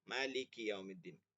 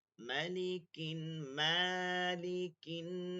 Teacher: একটা হচ্ছে মালিকি সূরা ফাতিহা টান আছে, আর সূরা নাসে কোনো টান নাই।